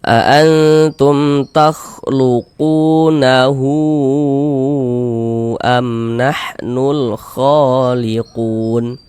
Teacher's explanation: huruf yang memiliki harakat domah itu dibaca panjang. Sehingga qu dibaca panjang. Mad thobi'i panjang dua harakat.